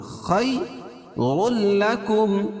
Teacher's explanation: لام ہے تو یہاں ادغام کریں گے لیکن غنہ نہیں ہوگا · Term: ادغام بلا غنہ